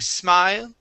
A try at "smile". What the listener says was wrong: Okay, and that L is very soft. Okay, give me a good L there.